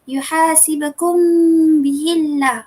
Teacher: Mim mati bertemu dengan ba. Sebenarnya dia kena dengun juga tapi tak dapat bibir. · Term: ikhfat syafawi